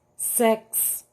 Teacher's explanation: olha aí o som do X saindo com KS